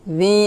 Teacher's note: জালিয়া জের জি, জি এখানে 3 আলিফ টান হবে